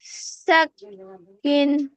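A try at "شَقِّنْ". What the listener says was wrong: না, ওটা শিন না। শক্ত করে বলো। শাক্কিন।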